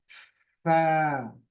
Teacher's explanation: ये देखिए, हवा आएगी इसके अंदर, और ये जो ऊपर है, दांत, ऊपर का जो दांत है वो नीचे के होठों को अंदरूनी हिस्से में लगेगा, बाहर की तरफ नहीं, अंदर की तरफ, यहाँ। फिर हवा भी बाहर फेंकेगा।